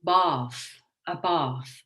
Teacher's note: i've got an artificial r sound in there